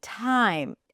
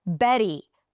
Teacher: All of the examples that I've given you, the aspirated T at the beginning, time, and the flap T in the middle, Betty, all of them can be pronounced with a regular T.